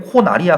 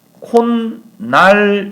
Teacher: 그래서 현상적으로 콧날을 발음할 때 최종 발음이 니은이 들어갔으니까 니은이 첨가되면 사이소리구나라고 알게 되지만 실제로는 니은이 들어간 것이 아니라 디귿이 먼저 첨가가 되고 그 다음 비음화 때문에 니은이 들어간 것처럼 보이는 거예요.